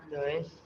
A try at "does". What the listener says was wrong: Bukan does bacanya. Das. Ya, das ya.